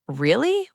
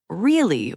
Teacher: Really with rising intonation means genuine surprise or doubt. Really with falling intonation means I agree or sarcasm.